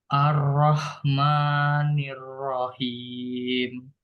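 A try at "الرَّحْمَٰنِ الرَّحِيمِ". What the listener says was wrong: Kepanjangan. Dua harokat. Ar-Rahmani. Ar-Rahmani.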